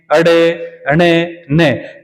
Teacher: जो पांचवें अक्षर है इनका उच्चारण स्थान जो है वो नासिका की सहायता से होता है।